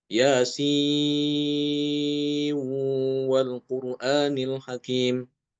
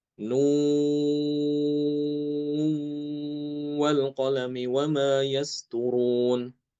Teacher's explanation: maka di sini Imam Ibnu Amir dia mengidghamkan nun ke dalam wawu